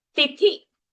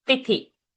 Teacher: Ti is Alpaprana, Thi is Mahaprana, and both are short sounds.